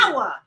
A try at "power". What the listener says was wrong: Power. We don't say ER. Power. Power. POWA. Power. Like soul power.